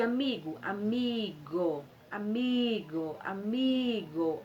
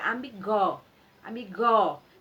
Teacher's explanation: Então a nossa sílaba tônica é o mi porque se fosse o go ficaria amigó amigó se fosse o